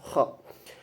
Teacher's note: Kho itu termasuk tobaqi. Tobaqi adalah pangkal lidah kho. Jadi ujung lidah yang dalam gitu.